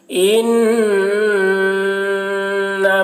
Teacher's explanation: نون مشدد ہے، نون میں غنہ ہوگا